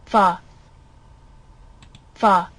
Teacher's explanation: So in this case the vocal folds are abducted, which means they're not together, and the velum is raised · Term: fricative sound